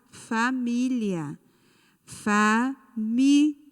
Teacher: a sílaba tônica é mi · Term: paroxítona